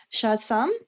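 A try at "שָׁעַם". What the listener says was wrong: No, no. No, look at it again. Your iron is silent.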